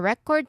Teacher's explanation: The stress sits on the first syllable because that's what um that's what we are naming a thing, an object, a noun.